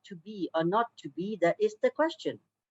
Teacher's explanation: an unstressed syllable followed by a stressed or accented one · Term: iambic pentameter